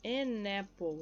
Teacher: Junto aqui o som do N com a vogal A já diretamente.